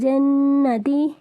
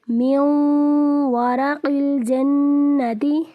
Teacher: نون ساکن کے بعد واو حروف یرملون میں سے آگے ہے اس لیے یہاں پر غنہ ہوگا